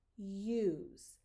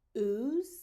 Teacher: In use, you should hear a Y in front of that. Oo is just a pure ooh.